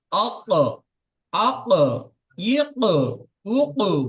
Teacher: জিভের গোড়া এবং তার বরাবর উপরের তালুর সাথে লাগিয়ে উচ্চারিত হয় 2 নক্তওয়ালা কফ